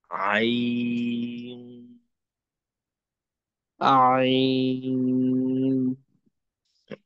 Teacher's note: শেষে ন না হয়ে অনুস্বর হবে।